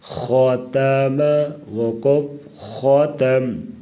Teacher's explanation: تا کو بریک پڑھیں گے، خا کو پر پڑھیں گے